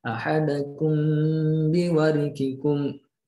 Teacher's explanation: Mim sukunnya melebur ke huruf ba. Jadi mim ba, makanya keluar hurufnya di bibir. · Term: ikhfa syafawi